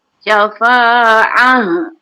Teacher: ha yang di sini di pangkal halkum.